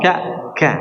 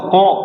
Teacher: sifat hamas dimiliki huruf kaf, maka qaf tidak ada sifat hamas